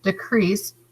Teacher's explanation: dash over the top but it's the long e sound decrease crease has the emphasis